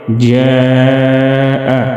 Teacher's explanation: جاء مد متصل کو 4 الف کے برابر کھینچ کر لمبا پڑھیں گے